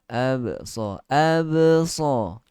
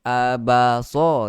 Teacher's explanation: Qalqalah sughra. Lantunan yang ringan lagi.